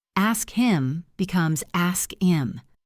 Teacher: So we drop it. Ask him becomes ask him. We drop the H.